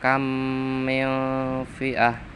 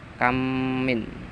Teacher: idgham misli, dimasukkan karena sama, mem mati bertemu mem sama